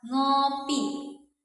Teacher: Contohnya nih pada kata ngopi. Nah, dia tergolong ke dalam bunyi nasal. Udaranya keluar melalui rongga hidung.